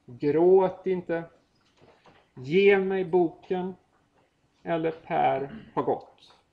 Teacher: eller Per har gått och då hör ni att de här inte får någon egen betoning utan egentligen då flyter ihop med ett angränsande ord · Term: klitisk ord